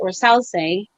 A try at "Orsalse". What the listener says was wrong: You gotta roll the R.